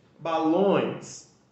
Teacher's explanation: Balões, o som ele sai mais nasalado, ou seja, como se ele estivesse saindo pelo canal do nariz. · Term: som nasalado